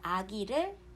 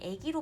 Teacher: 아기를 뒤에 있는 이 모음 때문에 애기로 발음하고요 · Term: 이모음 역행 동화